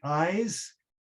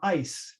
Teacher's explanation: eyes with the voice sound at the end has a longer vowel than ice which has a a a voiceless consonant at the end so